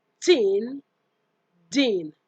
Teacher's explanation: The ta and da are alveolar plosives.